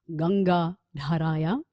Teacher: a D sound from behind the front teeth, also a bit of a puff of air from there